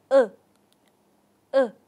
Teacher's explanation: chúng ta sẽ hơi kéo lưỡi nhẹ về phía sau và sau đó chúng ta phát âm nguyên âm ngắn